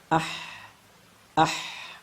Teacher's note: kita menjumpai terdapat aliran udara sehingga langsung saja sifat yang pertama adalah hams kalau kita tahan ya aliran udaranya maka ia akan menjadi seperti